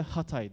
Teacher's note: Hatay derken biz gırtlağımızı böyle hafiften daraltmaya çalışırız. Bu daraltma sırasında işte bir engelleme çabası var. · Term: glottal sesler